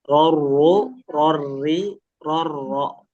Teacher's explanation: Jangan sampai jadi hilang ya getarannya. Jangan dibikin betul-betul cadel. Jadi r enggak ya dia rnya seperti biasa cuma kita batasi getaran.